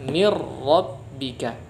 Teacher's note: Setelah dirubah menjadi huruf ra sukun, maka digabungkanlah huruf ra ini ke huruf ra yang kedua. Oleh karena itu double ra-nya. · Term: idgham bila gunnah